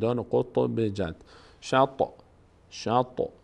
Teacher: در هنگامی که ساکن است در مخرج مقداری می‌لرزه